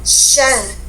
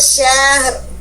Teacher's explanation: Huruf H ada keluar napas, mengalir panjang karena rohwa. Syar. Baru bunyi huruf Ro.